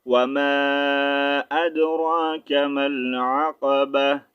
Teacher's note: جب تا کو ساکن کریں گے تو اس کا ساؤنڈ چینج کریں گے ہاں میں